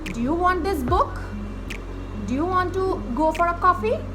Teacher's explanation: And when you ask someone a question, the pitch of the tone of the sentence goes right up at the end of the sentence